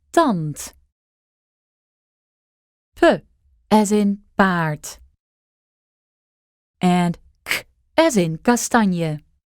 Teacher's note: All three of these were unaspirated, that is, they didn't have big puffs of air like English does.